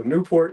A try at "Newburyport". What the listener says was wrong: Yeah, Newburyport, right? Newburyport. Newport. It's not Newport. You said Newport.